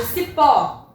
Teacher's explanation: Eu tenho si e o pó. Minha sílaba mais forte é o pó. Esse pó, ele é uma oxítona terminada em O.